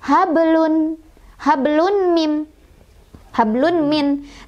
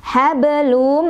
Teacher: Sebabnya karena ada tanwin doma bertemu dengan huruf idghom bigunnah, yaitu wau. Cara bacanya adalah dimasukkan sambil berdengung.